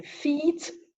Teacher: the lips spread and it's a long vowel · This is the closed monophone of the front vowels, and the lips are spread, and it's a long vowel